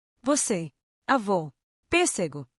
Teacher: O assento circunflexo indica que a vogal possui som fechado.